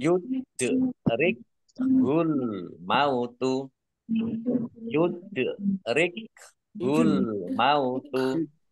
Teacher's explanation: Dal sukun bacaan qalqalah dibaca memantul, ditampakkan pantulannya.